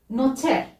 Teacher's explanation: Notaire, c'est notaire, avec un R roulé.